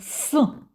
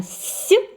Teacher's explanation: який нагадує свист давайте разом скажемо звуки с та с приголосні звук с твердий а с м'який